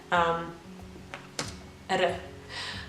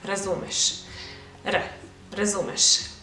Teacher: the best way how I would explain it would be as a flap or a tap in English